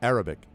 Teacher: Yeah, it's always the emphasis on the emphasis on the first syllable, as they say